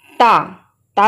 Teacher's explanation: अब अगला आता है तवर्ग। तवर्ग के पांचों ही जो वर्ण हैं, ये दांत, इनका जो उच्चारण स्थान है वो है दंत